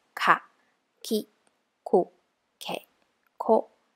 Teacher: we're not vibrating our vocal cords